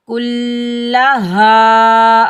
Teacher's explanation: कुल्ला, हाँ के ऊपर ज़बर, आगे अलिफ खाली है, ये अलिफ मद्दा है, इसको हम एक अलिफ की मिकदार खींच कर अदा करेंगे। कुल्ला हा, और हा को सीने से अदा करेंगे।